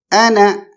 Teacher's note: حمزہ کی آواز میں ایک قسم کا جرک ہے، ایک قسم کا جھٹکا ہے، تو ہم جھٹکے کے ساتھ پڑھیں گے انا.